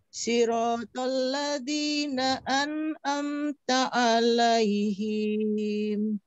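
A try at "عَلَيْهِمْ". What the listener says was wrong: Nah, hati-hati tidak dipanjangkan, Bu. Alaihim.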